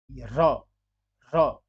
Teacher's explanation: अब र आप जब बोल रहे हैं, र, र, तो आपकी जिह्वा दंत के जड़ों में, दांत के जड़ों में लग रही है, जिसे हम वर्त्स या मसूड़ा कहते हैं